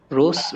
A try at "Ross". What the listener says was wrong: Okay, it's Ross. Okay, Ross. Rose is Rose. So this is OSS. So this is Ross.